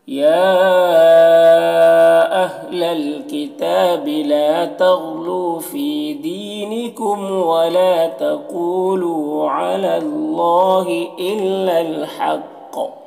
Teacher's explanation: حق کا قاف کو پور پڑھیں گے، حروف مستعلیہ میں سے ہے، اور یہاں پر وقف کریں گے تو قاف میں قلقلہ بھی ہوگا